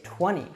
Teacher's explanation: say 20. this is because we have an nt here now americans will usually drop the t when we have an n and a t together